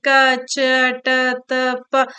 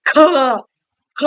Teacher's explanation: ಕಡಿಮೆ ಪ್ರಾಣದಿಂದ ಅಥವಾ ಕಡಿಮೆ ಉಸಿರಿನಿಂದ ಉಚ್ಚರಿಸಲ್ಪಡುವಂತಹ ಅಕ್ಷರಗಳನ್ನ ನಾವು ಅಲ್ಪ ಪ್ರಾಣಾಕ್ಷರಗಳು ಅಂತ ಕರಿತೀವಿ. ಫಾರ್ ಎಕ್ಸಾಂಪಲ್ ಕ, ಚ, ಟ, ತ, ಪ.